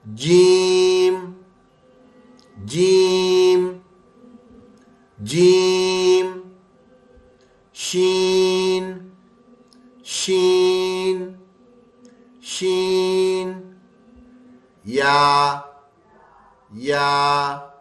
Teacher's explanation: यह बिल्कुल दरमियान में बीच जबान से तालू से मिलकर अदा होते हैं। बीच में से जबान जो है ना ऊपर तालू से टच होती है और ये इससे अदा होते हैं। · بیچ میں سے زبان جو ہے نا اوپر تالو سے ٹچ ہوتی ہے اور یہ اس سے ادا ہوتے ہیں، جیم جیم جیم، شین شین شین، یا ٹھیک ہے؟ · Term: सातवां मखरज, 7واں مخرج